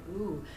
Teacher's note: I do hear a higher resonant pitch in your voice in that sound, ooh.